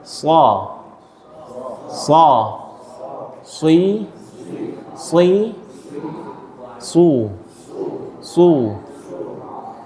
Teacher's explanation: Nah, efek idbak ini huruf jadi tebal.